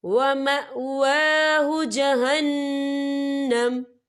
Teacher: وقف کی صورت میں میم ساکن ہو جائے گا